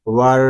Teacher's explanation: واو را زبر ور، اس کو ور اس طرح نہیں پڑھیں گے، را مشدد ہے، یہاں ہم تھوڑا تکرار کریں گے